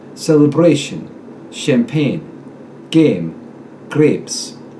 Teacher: The long A becomes the short E.